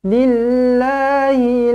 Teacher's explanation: Za'amtum min duni lafzul jalalah di sini dibaca dengan nipis kerana huruf sebelumnya berbaris bawah